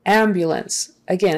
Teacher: it's a noun and the stress is on the first syllable.